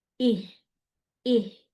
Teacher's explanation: اگر میں اس کو خالی یہ کرتی ہوں تو یہ غلط ہو جائے گا. یہاں پہ میں نے سانس بھی جاری رکھنا ہے، آواز بھی.